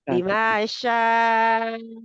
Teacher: शाअ कितने काउंट है, 4 से 5 काउंट